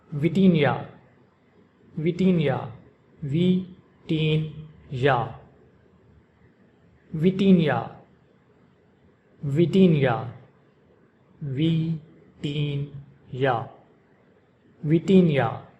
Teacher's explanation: pronounced in Portuguese with the emphasis on the second syllable teen